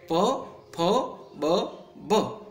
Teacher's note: ઉષ્ઠ્ય એટલે કે હોઠ દ્વારા જેનો ઉચ્ચાર થાય છે એવા ધ્વનિ છે, પ વર્ગના ધ્વનિ પણ કહી શકાય. · પ અને ફ અઘોષ છે, બ અને ભ ઘોષ છે. એમાં પ અલ્પપ્રાણ છે, ફ મહાપ્રાણ છે.